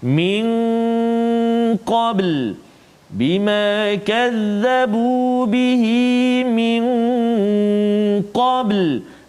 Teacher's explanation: nun mati bertemu dengan qaf, dengung 2 harakat